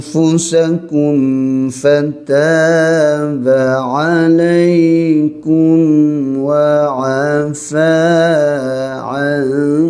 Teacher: Mim mati dengan fa izhar syafawi, bibir rapat sekejap ya.